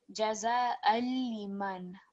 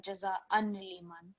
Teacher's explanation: with lam mushaddad, you're not going to hear the fathatain. So it will be jaza al-liman rather than jaza an-liman.